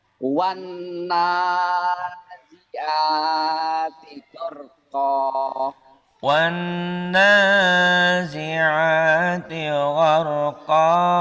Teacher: Wannya nunnya bertasdid ditahan, nanya juga ditahan karena mad asli.